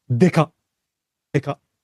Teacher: deka with no like glottal stop at the end